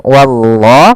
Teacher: Bil kafirin Kemudian wallah pada lafal Allah di sini lam tebal lafzul jalalah lamnya tebal